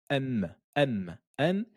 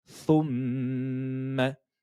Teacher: M, M, M. Et elle a le son également qui sort au niveau de la cloison nasale, qui sort dans le nez. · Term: runna